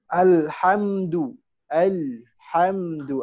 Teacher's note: Tenggorokan tengah. Letaknya ha itu tenggorokan tengah. Wasatul halq.